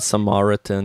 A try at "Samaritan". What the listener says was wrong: Samaritan? Maybe in your weird accent. Samaritans. You make it sound like Martians or something.